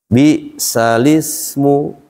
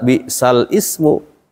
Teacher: Jadi bukan dibaca bal Ismu karena dia hamzahnya tadinya Hamzah wasal